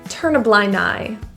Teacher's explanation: You might notice the D in blind is sometimes deleted depending on how quick you're saying it.